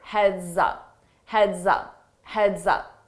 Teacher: So notice that S on heads, when I combine it with my vowel sound in up, I use a z, z to combine that together, and it sounds like one word.